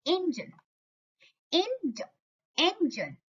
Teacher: इसमें क्या पैटर्न है? Stressed followed by unstressed. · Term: trochaic